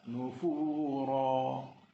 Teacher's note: ra yang dibaca dengan tebal ataupun tafkhim kerana ra berbaris atas. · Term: ra tebal